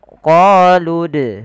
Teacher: apabila ada huruf dal berharokat sukun, maka ia kita baca dengan bacaan qalqalah, harus memantul. Qalqalah artinya memantul.